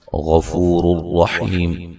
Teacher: غفور الرحیم غین کو موٹا ادا کریں گے، فو و مدہ ہے. نون تنوین کا ادغام ہے، بلا غنہ ہے، غنہ نہیں کریں گے. یہ را بھی اور دونوں راءات کو موٹا ادا کریں گے، ٹھیک ہے.